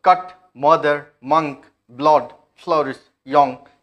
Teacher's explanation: और इसका पोजीशन कहां पर है, यहां पर हमने दिखाया था, ये पोजीशन है, ये सेंट्रल है, ये सेंट्रल वावल है, राइट, सेंट्रल ओपन है वो